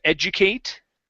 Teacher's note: when it is a verb we do pronounce the eight